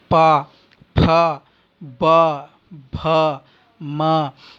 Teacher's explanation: आपको उच्चारण करने के लिए पा अर्थात दोनों ओठों का मिलना आवश्यक है। तो पा, फ, ब, भ, म, तो आप ओष्ठ से इनका उच्चारण स्थान करते हैं।